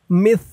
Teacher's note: জামি ওমিসলাহু ও মিস মিম দিয়ে সা ধরবে। মিস সার উচ্চারণটা একদম নরম পাতলা হবে।